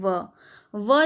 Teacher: जिन व्यंजनों के उच्चारण में दोनों ओष्ठ दांतों को स्पर्श करता है उसको दंतोष्ठ कहते हैं, जैसे कि व जो है वह आपका दंतोष्ठ व्यंजन के अंदर आ जाता है।